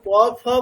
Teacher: দুটো অষ্ঠ দুটো ঠোট পুরোপুরি স্পর্শ করছে তার মানে কি দাঁড়াচ্ছে বর্গীয় বয়ের পারফেক্ট উচ্চারণ মানে কি রকম দুটো দুটো অষ্ঠ পুরোপুরি স্পর্শ করবে লাইক প ফ যেমন হচ্ছে তেমন।